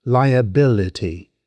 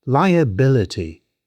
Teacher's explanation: It has 5 syllables. The stress lands on the 3rd syllable.